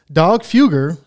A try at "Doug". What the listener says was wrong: You still said dog. No, you said dog again.